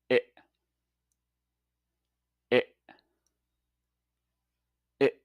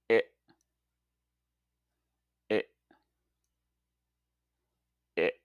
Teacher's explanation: When you say this sound, your tongue is positioned in the middle of your mouth and is slightly raised. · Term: I sound